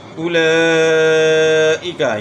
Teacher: یہاں جو ہے مد واجب ہے، اس کو دگنا کھینچنا ہے